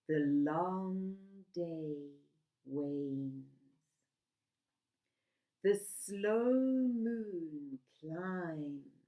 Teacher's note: The long vowel sounds slow down the pace.